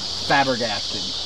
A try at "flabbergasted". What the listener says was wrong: Flabbergasted. Add an L.